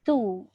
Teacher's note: Ta tu tetap nipis walaupun disebut baris depan